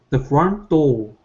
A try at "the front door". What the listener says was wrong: Okay, so here you're saying do, and you're only pronouncing an O. Okay, finish the word with an R. The front door.